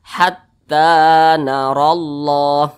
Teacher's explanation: Maka tanya ini dibaca panjang, namanya mad tabi'i. panjangnya 2 ketukan atau 2 harokat.